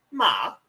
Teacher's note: tone number two Rising vowel